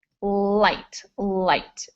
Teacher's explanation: light is towards the front of your mouth, and your tongue does touch the roof of your mouth, but it probably doesn't touch your teeth.